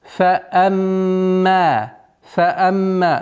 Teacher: Назализация в размере двух огласовок.